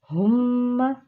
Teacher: میم کے اوپر تشدید ہے اس لیے ہم غنہ کریں گے